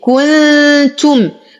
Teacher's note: نون ساكنة وبعدها التاء في كلمة واحدة فالحكم إخفاء مع غنة كاملة مرققة